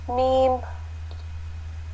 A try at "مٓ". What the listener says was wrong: تھوڑا سا کھینچ کے پڑھیں گے. دیکھیں یہاں جو میم لکھا ہے اس کے اوپر مد بنا ہوا ہے نا, تو اس کو ہم کھینچ کے پڑھتے ہیں, میم.